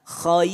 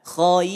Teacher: Maka kalau ketemu dengan huruf ro, walaupun sebelumnya dia adalah huruf yang tebal, kho-nya itu kan tebal, betul ya? Kho termasuk yang tebal, maka ro-nya tetap dibaca tipis.